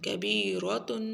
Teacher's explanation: تا کے اوپر غنہ نہیں ہوگا کیونکہ آگے حروف حلقی میں سے ہے حمزہ. جب تنوین کے بعد حروف حلقی میں سے کوئی آ جائے تو پھر غنہ نہیں ہوتا.